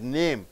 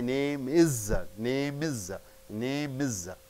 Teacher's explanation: It ends with the consonant sound M and it starts with the I, vowel.